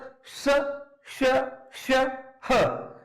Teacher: जब हम इन वर्डों को उच्चारित करते हैं तो अधिक मात्रा में वायु जो है, गर्म वायु हमारे मुख से निकलती है। इस कारण से हम इन्हें ऊष्म व्यंजन कहते हैं।